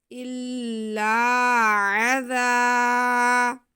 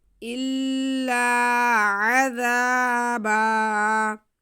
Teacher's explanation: زال پہ زبر ہے، ساتھ میں الف ہے، تو اسے ہم ایک الف کے برابر کھینچیں گے زال کو